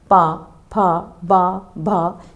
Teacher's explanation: जब तक आप इन होठों का यह स्पर्श आपस में नहीं होगा आप ये वर्ण बोल नहीं सकते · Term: ओष्ठ व्यंजन